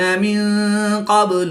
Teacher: نون ساکن کے بعد قاف حروف اخفا میں سے ہے تو یہاں پر اخفا ہوگا، یعنی غنہ زمانی کر کے پڑھیں گے